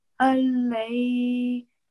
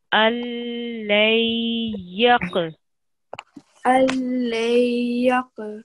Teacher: Alay. So you don't read the noon sakin, you're going to join straight to the ya mushaddid. Alay.